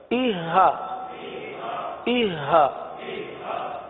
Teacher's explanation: سینہ نہیں بلکہ گلے کے انتہائی حصہ جو ہے، آخری حصہ، یہاں سے یہ حرف ادا ہوتا ہے